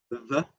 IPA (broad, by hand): ð